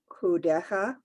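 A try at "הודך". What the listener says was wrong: Okay, remember that's the dot is over, so it's hodecha.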